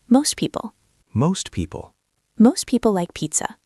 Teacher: For example, most people. STP. Drop the T.